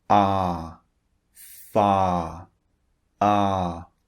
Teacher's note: the first thing you notice I'm sure is that the first vowel is long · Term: long ah